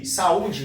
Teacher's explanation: o A e o U, eles estão próximos na palavra, mas na separação de sílaba, eles ficam em sílabas separadas. Esse, então, é o hiato.